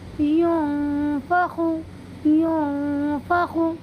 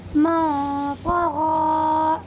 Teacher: اب یہاں پر بھی یہ نون ساکن ہے، اس نون ساکن کے بعد حروف اخفا کے 15 حرفوں میں سے فا آیا ہوا ہے، اسی لیے اس میں اخفا ہوگا اور اس نون ساکن کی آواز کو ناک میں چھپا کر کے پڑھیں گے